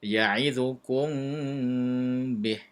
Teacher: Ya'idzukum bih, mim mati bertemu dengan ba, pun dibaca dengan sedikit dengung